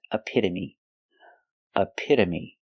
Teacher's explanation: the t is between vowels so it's pronounced with with a d a fast d a a again we have the short uh sound like cup